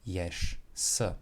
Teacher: However, we do have two consonants next to each other at an end of a word, and they do have differing voice. So the second consonant, the unvoiced s, will change the voiced j sound to an unvoiced sh sound, and we will have yesh, s.